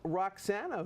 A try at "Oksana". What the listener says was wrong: Yeah, actually, it's the same name, but without R. It's Oksana.